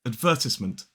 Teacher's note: in a modern British RP accent, it starts with a schwa